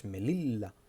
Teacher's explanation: What we do is we elongate the last consonant. We elongate, like we do it again with the L.